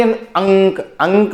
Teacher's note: अंक बोला आपने तो नाक से आवाज आई आपकी, ठीक है, मुंह का भी साथ है लेकिन मुख्य उच्चारण स्थान क्या है, नाक है।